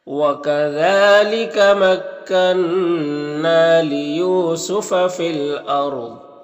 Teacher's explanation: یو میں واو مدہ ہے، ایک الف کے برابر کھینچیں گے۔ فی الارض میں را کو پر پڑھیں گے، ضاد کو بھی پر پڑھیں گے